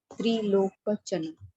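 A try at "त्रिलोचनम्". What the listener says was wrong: Oh, that is a mistake. You have to make it Trilochanam. Locha, not ka. Cha.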